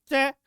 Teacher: च बोलने से पहले जीभ है वो तालू के निकट पहुंच गई, और जैसे ही मैं बोलूंगा च तो जीभ को हटाना पड़ेगा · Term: स्पर्श संघर्षी व्यंजन